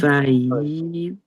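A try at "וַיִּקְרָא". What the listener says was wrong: Là, tu as dit va yav. Et là, c'est va. Ici, c'est un i.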